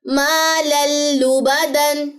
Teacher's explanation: لام اور را پہ میں نے غنہ نہیں کیا, صرف ادغام ہوا